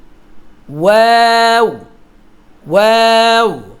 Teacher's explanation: ওয়াওটা আগে মুখ গোল হবে, তারপর ছড়াবে। মুখটা গোল করুন।